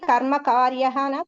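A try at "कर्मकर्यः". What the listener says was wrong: కర్మ కర్యహమ చివర్లో రాకు యావత్ వస్తుంది. కాకు దీర్ఘం రాదు రాదు రాదు. కర్మ కర్య, లేఖన్య లాగానే ఇది. లేఖన్య, అంకన్య, కర్తర్య, కర్మకర్య అలా.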